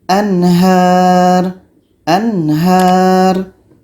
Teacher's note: Nun mati jelas, ha jelas dan tidak ada dengung.